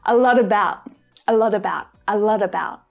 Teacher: So you get a T between two vowel sounds, it makes a D, D sound.